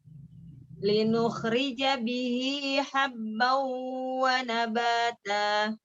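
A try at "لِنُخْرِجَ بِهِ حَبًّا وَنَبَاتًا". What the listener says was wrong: Linukhrija bihi panjang ya.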